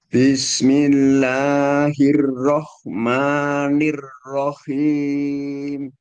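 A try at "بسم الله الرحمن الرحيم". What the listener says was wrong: Agak sedikit kepanjangan Mbak ya. Telah sama ma-nya agak sedikit kurangi panjangnya. Bismillahirrahmanirrahim.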